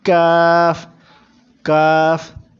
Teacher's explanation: دوسرے کاف کتاب والے کو پتلا کر کے پڑھیں گے